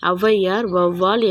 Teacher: சொற்களின் முதலில் வரும்போது தனக்குரிய 2 மாத்திரை அளவிலிருந்து குறைந்து 1½ மாத்திரை அளவில் ஒலிக்கிறது. இவ்வாறு குறைந்து ஒலிக்கும் முகரம் ஔகாரம் ஔகார குறுக்கம் எனப்படும்.